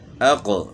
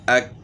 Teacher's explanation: اس میں قلقلہ بھی ساتھ ہوگا، یعنی موٹا کرنے کے ساتھ ساتھ اس میں ہم نے قلقلہ بھی کرنا ہے